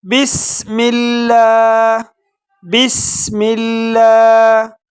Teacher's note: بسم اللہ بسم اللہ، سین میں سیٹی کی آواز نکالیں گے اور لفظ اللہ کو باریک پڑھیں گے کیونکہ لفظ اللہ سے پہلے جو حرکت ہے اس پر زیر ہے، اس لیے لفظ اللہ کو باریک پڑھا جائے گا۔